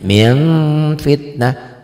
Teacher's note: ada engnya tapi lebih dominan ada m-nya. Ming fitnah, hukumnya sama ikhfa karena nun sukun ini ketemu dengan fa.